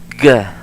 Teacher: But if you have a G, then the letters A, O, U, etc., it will sound like g, the voiced velar sound. Voiced velar plosive, yeah.